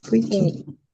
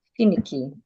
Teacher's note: You're stressing fee. You're stressing FI.